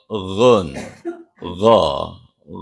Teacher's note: ada di pangkal tenggorokan bagian belakang